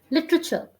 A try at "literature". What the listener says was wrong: Correct.